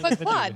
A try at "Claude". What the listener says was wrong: I just want to point out they're not saying Claude, C-L-O-D, like a clod of mud. They're saying Claude. just sound like you're saying the mud thing over and over again.